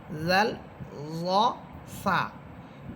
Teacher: জিহ্বার আগা সামনের উপরে দুই দাঁতের আগার সাথে লাগবে